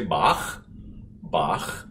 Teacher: You feel how far back the ch is in the back of your throat. It's not the ich, it's not the far forward ch that you would have if you were to say the word ich, which means I in German.